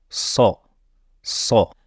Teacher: une lettre emphatique c'est-à-dire comme vous l'entendez une lettre grave sors sors dans le premier verset elle est prononcée sans voyelle